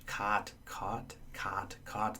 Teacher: someone from the West would just hear a single vowel which is a low back vowel